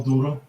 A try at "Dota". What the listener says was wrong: it sounds like you're saying dora like dora the explorer